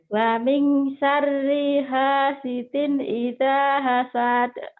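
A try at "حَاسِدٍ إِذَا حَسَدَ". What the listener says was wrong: Tapi pendek. Hasad. Nggak ada madnya kan?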